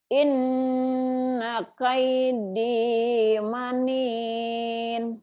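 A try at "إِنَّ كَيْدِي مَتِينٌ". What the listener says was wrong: matin bukan manin. Matin, matin. Inna kaidi matin.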